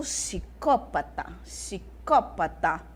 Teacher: vocês percebem que o som do P sumiu eu não falo PSI eu já falo si